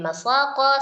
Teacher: sa adalah mad diikuti oleh huruf sukun karena waqf, dan qaf adalah huruf qalqalah